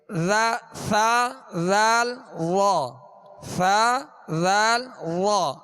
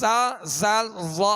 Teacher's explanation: اس کو ہم سا، ذال، وا نہیں پڑھیں گے بلکہ نرمی کے ساتھ ادا کریں گے، اس میں سیٹی کی آواز پیدا نہ ہو۔ تو ان کے اندر نرمی کی آواز پیدا کرنا یہ اس کی خوبی ہے۔